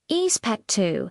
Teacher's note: For expecto, the consonants might be a little softer. The X might sound more like an S sound, expecto, and the O at the end might rise in pitch. Expecto, can you hear that upward inflection?